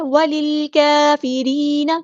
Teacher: گے، را یہاں پہ ہمارے ہے لائٹ لیٹر ہے، ٹھیک ہے، کیونکہ را کے نیچے زیر کسرہ آئی ہے تو ہم باریک پڑھیں گے